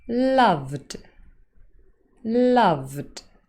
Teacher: this word contains 4 voiced sounds. In fact, it consists of only voiced sounds. L, A, V, D.